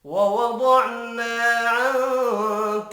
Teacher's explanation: نون ساکن کے بعد کاف ہے، اخفاء حقیقی ہوگا۔